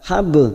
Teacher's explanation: ba sukun yang mati asli di tengah kalimat namanya qalqalah sugro